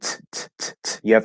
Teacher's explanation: It's a burst, um, much like k, except k is in the back and t uses the front here. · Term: strong T